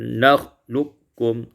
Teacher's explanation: Pada ayat yang ke-20, nakhluqukum idghamul qaf fil kaf idghaman kamilan, diidghamkan qaf pada kaf dengan idgham yang kamil yang sempurna